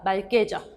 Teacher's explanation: 리을 기역의 발음이 리을로 나서 맑게가 맞습니다. 막게가 아니죠.